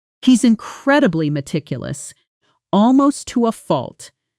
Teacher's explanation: Now listen for how almost to often compresses in casual native speech. The T softening and blending coming out closer to almost to fault with the second T barely audible.